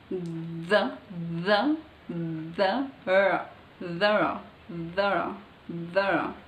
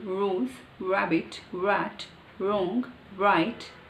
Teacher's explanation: So the raw, tongue is flipped back so fast, but it's not touching, the tip of the tongue is not touching anywhere else